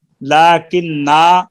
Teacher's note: اگر لاکنہ پہ ٹھہریں گے تو الف پڑھا جائے گا